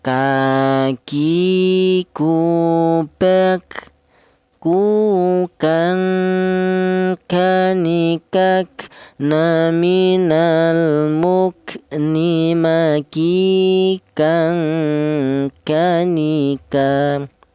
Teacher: Huruf kaf keluarnya huruf berasal dari pangkal lidah ya.